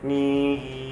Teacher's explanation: Some air is directed out the nose, and some air is directed out the mouth. Essentially, the velum is in the mid position. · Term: nasalized sound